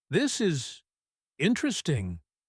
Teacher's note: He paused and stressed, interesting.